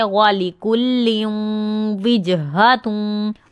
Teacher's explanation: वाव होंठ गोल होंगे